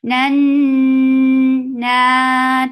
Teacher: This gunna is akmal, so keep the sound in your nose for a longer time. Nan na 2 counts long.